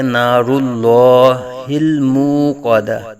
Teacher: اللہ، یہاں را کو اوپر پڑا جائے گا، اور اس میں جلالت اللہ عز و جل کے لام سے پہلے را کے اوپر پیش ہے، تو یہاں اس میں جلالت اللہ عز و جل کے لام کو پر پڑا جائے گا